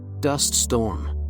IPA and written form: dʌst stɔrm (dust storm)